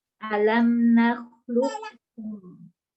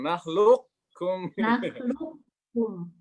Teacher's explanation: idgham nakis, yaitu sifat isti'la huruf qaf tetap ada namun sifat qalqalahnya ditiadakan.